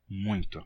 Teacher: é uma nasalização progressiva, em que o M transfere a sua nasalidade para o ditongo UI, transformando ele em UM, e fica muito.